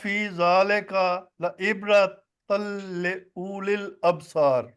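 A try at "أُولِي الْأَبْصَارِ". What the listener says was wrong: او نہیں ہے، او نہیں پڑھنا، اولی الابصار۔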